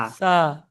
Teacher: জিভের আগা উপরের দাঁতের আগায় লাগিয়ে সা উচ্চারণ হবে